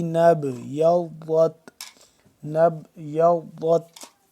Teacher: نون مل رہا ہے با کے ساتھ اور با قلقلہ ہو رہا ہے · ضاد کو موٹا کر کے پڑھیں گے اور ضاد کے بعد تا ہے، تا کو باریکی سے پڑھیں گے